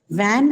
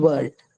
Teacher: So van is a labiodental ver and world is a bilabial ver. Okay, so you need to round both your lips as you say the sound ver in the word world, right?